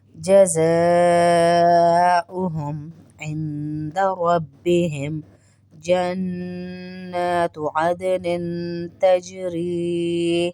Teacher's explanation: عدن دال پہ قلقلہ ہوگا. تجری ری کو اس لیے کھینچ رہے ہیں کہ یا مدہ ہے